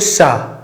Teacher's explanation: थोड़ी सी ऐसे गर्म हवा निकल रही है और रगड़ के बाहर आ रही। शा सा हा, आप ऐसा करके बोलिए।